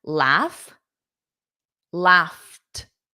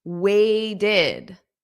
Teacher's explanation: when I said laughed, the T, it was a T. Exactly. It was a T at the end. It doesn't add an extra sound.